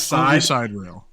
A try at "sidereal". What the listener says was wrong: It is spelled side real, not rail, and so sidereal is how you would pronounce that.